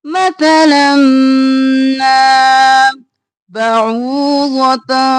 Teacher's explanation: عین گلے کے درمیان سے